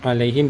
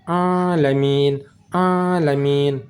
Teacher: ain letak di tengah kerongkongan, bukan di hidung. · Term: huruf ain